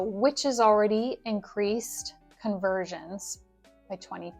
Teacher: the vowel modifies to is. It's more of a clipped vowel modification due to rapid speech